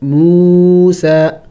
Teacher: میم واو کو کھینچیں گے، لمبا کریں گے، اس لیے کہ واو مد ہے اور کڑی زبر ہے سین کے اوپر، یا کے اوپر کچھ بھی نہیں ہے.